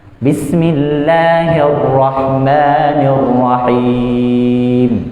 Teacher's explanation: Jadi ra ini waraqat ra idza ma kusrat kadzaka ba'da al-kasri haitsu sakanat. Jadi ra ini dia getarnya itu ada tapi nggak boleh kebanyakan. · getarnya itu ada tapi enggak boleh kebanyakan